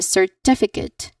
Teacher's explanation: you should stress the second syllable